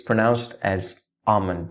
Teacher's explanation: the AL again is silent in both of these words almond and salmon